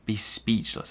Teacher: So we stress the second syllable.